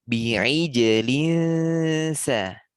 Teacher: jangan terangkat lidah sedikit pun karena makhraj sin itu ujung lidah sampai ke belakang